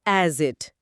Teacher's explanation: ایس کی آواز اگلے لفظ اٹ سے جڑ کر سٹ یا سٹ بن جاتی ہے